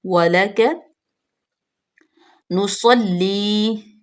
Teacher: اور کاف پہ بھی، واو ہونٹوں کی گلائی سے ادا ہوگی، لام بھی باریک پڑھیں گے اور کاف بھی ہونٹوں کو چوڑا کر کے